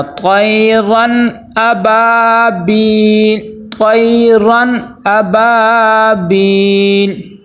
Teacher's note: اور اب یہاں پہ تنوین والا قاعدہ، نون ساکن تنوین کے جو 4 قاعدے ہم نے پڑھے ہیں، تو یہاں پہ وہ قاعدہ لگے گا کہ تنوین کے آگے حروف حلقی میں سے حمزہ آ گیا ہے، تو یہاں پہ ہم نے کیا کرنا ہے، غنہ نہیں کرنا